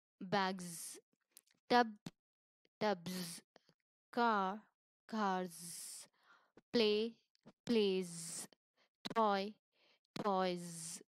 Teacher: Now let us discuss the last sound, that is Z sound, which is voiced. So after all the other consonants and all vowel sounds, plural endings are pronounced as z sound. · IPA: /z/